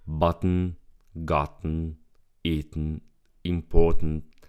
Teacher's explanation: the throat stops the T in the middle of the word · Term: glottal T, The glottal T